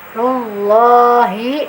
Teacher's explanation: Ketika ro berharokat dhammah, dia harus tafkhim. Nah, cirinya sudah tafkhim, pangkal lidah kita sudah terangkat ya.